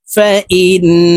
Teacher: আমরা এই হামজা তাসদীদওয়ালা নুনের সাথে নাকের বাসি থেকে গুন্নাহ করে পড়ব।